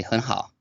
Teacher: unless they're exaggerating, they'll just say 很好, right? They won't say the full third tone, even at the end of a phrase. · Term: half third tone